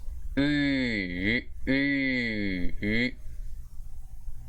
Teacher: But this is the front close rounded vowel, which is oo.